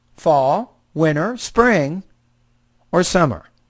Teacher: When you get to summer, even though this is a question, it's a WH question, so your tone should actually drop when you get to the end.